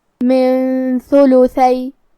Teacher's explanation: ثا حروف الاخفاء میں سے ہے اور اخفاء کا معنی ہے چھپا دینا تو ہم یہ نون ساکن کو چھپاتے ہوئے اور غنہ کے ساتھ یہ حکم کو ادا کریں گے